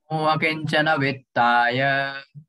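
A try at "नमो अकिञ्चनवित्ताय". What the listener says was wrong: So in the English, you will read only Kinchana. Okay, but it's not a Kinchana. Before K, there is a hyphen written. So it becomes a.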